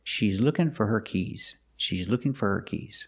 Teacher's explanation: the answer four is not at the end so it is not stressed it's pronounced fur · with the word her the H is silent because the word her is not stressed so you hear fur